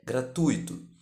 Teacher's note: A pronúncia culta de gratuito é gratuito, com a tônica no U, do ditongo ui. Por conta disso, há um erro na sua grafia, identificado pela ausência do acento agudo na letra I, para consolidar o hiato.